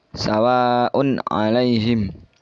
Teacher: jadi un-nya itu jelas ya tidak mendengung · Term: idhar halqi, idhar kholqi